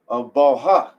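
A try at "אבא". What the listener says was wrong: Abba. You didn't say ba. You said abal. Abal. It's abba. Ba. It's not ba. It's an L right there.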